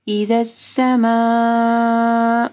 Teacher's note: سما میں دیکھیں مد ہے، اس کے بعد حمزہ ہے تو 4 سے 5 حرکات کے برابر اس کو لمبا کرنا ہے